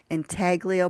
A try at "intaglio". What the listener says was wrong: I believe it's pronounced the N is silent. Italio. Italio.